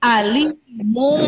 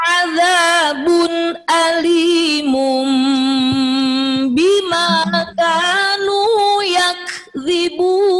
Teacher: An in un atau nun mati ketemu dengan ba jadi m. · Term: iklab